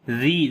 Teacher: ذال کو نرم پڑھیں گے، لمبا بھی کریں گے، یا مدہ ہے